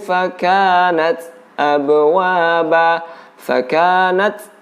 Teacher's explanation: di sini ada angin yang keluar atau udara yang keluar bersamaan dengan disukunkannya huruf ta. Dan tempat untuk mengeluarkan angin ini huruf ta. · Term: huruf ta yang bersukun